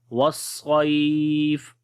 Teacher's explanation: سے پڑھیں گے وصیف۔ تھوڑا سا لمبا کرتے ہیں، یہ مد لین عارض ہوتی ہے، اس کو 2 سیکنڈ جو ہے وہ لمبا کیا جاتا ہے